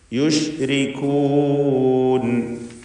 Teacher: റായിന് തർക്കീഖ് കൊടുക്കണം, കസ്റായതുകൊണ്ട്.